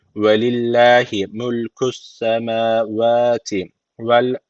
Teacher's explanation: Yani Allah lafzına alttan giriş yapıldığı için Allah lafzı burada ince okunması gerekiyor. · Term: Allah lafzı ince